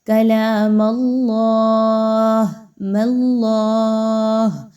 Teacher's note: میم کو باریکی رکھیں گے، صرف حرف جلالہ اللہ کو پر پڑھا جائے گا